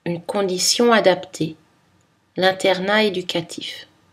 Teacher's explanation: Pas de liaison, en numéro 2, entre un nom singulier et un adjectif.